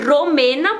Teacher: Em espanhol eu teria que dizer Romena, porque o R no começo de palavra em espanhol é forte, é R vibrado, né? A língua lá em cima, perto dos dentes.